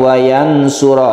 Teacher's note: Ya di sini kita panjangkan wayansuro ya wayansuro ini kita baca Nun bertemu dengan SH ikhfa namanya kita baca samar ya kita baca samarsama dan di sini karena dengung kita ada